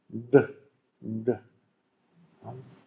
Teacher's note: bei Retroflex wird die Zungenspitze nach hinten geklappt und dann der Laut gebildet.